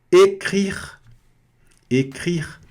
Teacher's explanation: Écrire. Aqui, R na garganta, E fechado, R na garganta, E sem pronunciar no final. Écrire. E esse R no final aqui fica écrire.